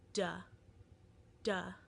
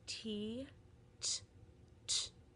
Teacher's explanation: For example, T, T, T, and D, duh, duh, are a set of paired sounds that are considered alveolar sounds. They, just like with the two THs, one is voiced, the duh, and one is unvoiced, t.